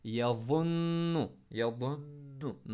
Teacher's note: नाम, इसी तरह से यवन्नु, वाव को मोटा पढ़ेंगे, नून को स्ट्रेस के साथ पढ़ेंगे, नून को नाक से निकालने के लिए पिंक, इसीलिए यहाँ पर लिया गया, क्योंकि नून पर जितने जोर लगा के पॉज करेंगे नाक से आवाज़ निकलेगी